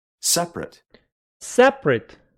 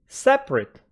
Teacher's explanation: After P, you don't have any vowel sound.